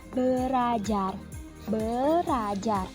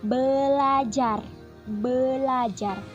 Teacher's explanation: karena ada bunyi er maka er yang pertama dibedakan atau disimilasi kan menjadi l l sehingga menjadi belajar-belajar karena perubahan tersebut sudah menembus batas fonem